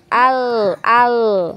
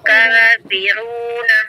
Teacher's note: Al-Kafiruna, Jangan ditarik dulu huruf lamnya ya, biarkan di posisinya ya. Nah, lidahnya, ujung lidahnya di gusi ya, digusi di gigi-gigi atas ya. Al ya, biarkan di situ, biarkan ngalir, baru masuk di huruf kaf ya.